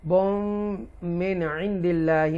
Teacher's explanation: یہ نون کو کلیئر پڑھیں گے، اظہار کریں گے کیونکہ حروف حلقیہ میں سے تھروٹ لیٹر میں سے عین آ رہا ہے